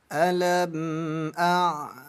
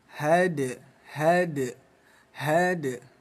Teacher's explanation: Ada huruf dal sukun ya. Ini dipantulkan.